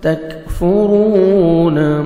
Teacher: تا کو آپ نے باریک پڑھنا ہے. کاف کا ہلکا سا ساؤنڈ آئے گا، لائٹ سے ساؤنڈ. تکفرون را کو موٹا پڑھنا ہے اور واو مدہ 1 سیکنڈ را کو کھینچیں گے.